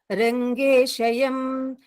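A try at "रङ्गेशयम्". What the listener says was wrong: Madam, for persons who are not of Tamil speaking, or it is not Shayam. Rangesayam.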